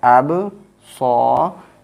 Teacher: after fatha, alif is coming, we will make this sad sound longer. It will be madda.